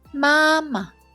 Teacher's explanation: Finally is the neutral tone, it's a light and short tone